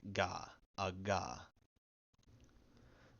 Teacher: then it's just the voiced velar plosive · If akka is preceded by j, then it makes a voiced velar plosive, like ga, a ga.